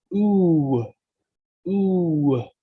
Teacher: The reason it has a W is because the U sound naturally leads to a W consonant when you're saying it. Ooh, ooh. When you're saying it slowly, you can hear that W.